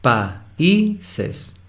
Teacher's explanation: Son 3 sílabas, no es países. Si se dan cuenta, la A y la I se están separando. Países. Es decir, hay un hiato en pa y.